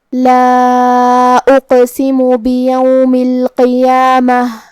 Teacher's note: آخر میں تاء مدورہ ہے. ہم یہ کلمہ پہ رکیں گے تو اس پہ ہا سے رکیں گے، مطلب ہم آخر میں ہا ظاہر کریں گے